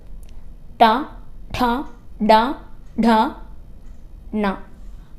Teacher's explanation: മൂർധാവ് ഉപയോഗിച്ച് പ്രൊനൗൺസ് ചെയ്യുന്നതായിട്ട് പറയും അതായത് ട ഡ ഡ ഠ ണ ഈ ലെറ്റേഴ്സ് പ്രൊനൗൺസ് ചെയ്യുമ്പോൾ നമ്മുടെ ടങ്ങ് മുകൾ ഭാഗത്ത് തട്ടുന്നുണ്ടാവും